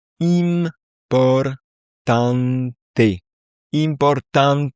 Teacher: à la fin, ça fait T, donc ça se prononce bien à la fin